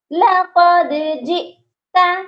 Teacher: یہاں حمزہ ہے تو حمزہ کو ہم نے جھٹکا دے کر پڑھنا ہے